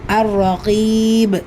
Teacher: பா கல்கலாவுடைய எழுத்துங்கிறதுனால பெரிதாக அசைச்சு முடிக்கணும் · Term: கல்கலத்துல் குப்ரா